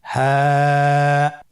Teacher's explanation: হা হরফটি উচ্চারণ ক্ষেত্রে অবশ্যই বারিক হবে এবং 1 আলিফ টেনে পড়তে হবে।